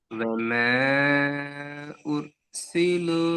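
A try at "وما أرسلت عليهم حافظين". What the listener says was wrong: وما நீட்டுறது போதாது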